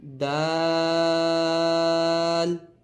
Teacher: دال کو بھی کم سے کم 5 الف کی مقدار کھینچ کر پڑھیں گے۔